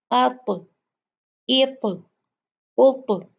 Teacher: جب طا ساکن ہوتا ہے تو اس کو جھٹکے سے پڑھتے ہیں